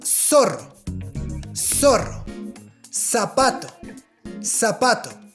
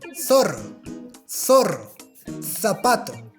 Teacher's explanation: This word is pronounced S, S, at least in South America. In Spain, this letter is pronounced like th, th.